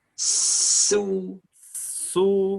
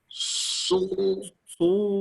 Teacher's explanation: Kalau sin, domah langsung su. Kalau sod, sudah tebal duluan.